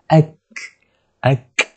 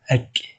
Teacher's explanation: Dia kena ada sedikit angin, hembusan angin nafas kita yang keluar tu.